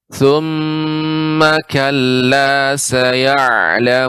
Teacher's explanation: Ya, ma dibaca dengan pendek Ibu. Jadi ketika membaca ma langsung ke ka.